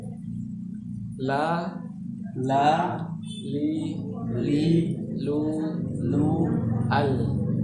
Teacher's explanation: Jadi semuanya mulai dari gigi geraham pertama yang sejajar atau berhadapan, ya. Disentuhkan dengan gusi, atau bisa juga sebagian ulama mengatakan pangkal gigi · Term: huruf la